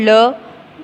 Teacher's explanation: ल जब हम बोलते हैं तो दांत से हम जीभ को टच करते हैं, इसलिए ये हो जाएगा दंत से।